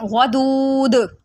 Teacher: قلقلہ کریں گے کیونکہ دال حروف قلقلہ میں سے ہے، تو اس کو پڑھیں گے ودود۔